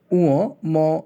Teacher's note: এই ধ্বনিগুলো উচ্চারণের সময় নাক দিয়েও বাতাস বের হয় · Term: নাসিক্য ধ্বনি